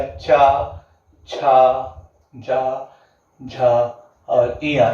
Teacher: यानी जब हम बात करते हैं कि तालु का जब सबसे अग्रभाग मदद करता है तो उसे क्या कहते हैं, तालव्य कहते हैं। इसमें क्या आ जाएगा, चा, छा, जा, झा और इया।